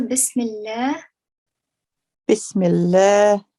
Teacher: when a letter carrying kasra is before the Lam al-Jalala, we will have to sound it in a thin way